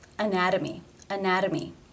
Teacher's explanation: do you to pronounce the t in the next word again it is a t between two vowel sounds anatomy anatomy therefore it is the flap t sound or d